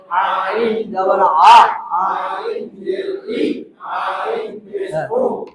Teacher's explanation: আইন হলকের মাঝখান থেকে গলায় চিপে আদায় হবে।